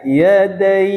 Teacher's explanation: Ada huruf mad berupa ada huruf layyin berupa ya, jatuh sebelum huruf akhir dan diwakafkan dibaca mad lin. Jadi dibaca yadai.